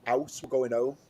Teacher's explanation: Where I'm from, we don't pronounce H's